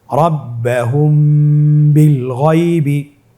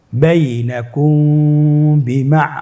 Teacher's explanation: মিম সাকিনের পরে যদি বা আসে অবশ্যই মিম সাকিনকে গুণনা করে আমরা পড়ব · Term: ইফা সাফাবি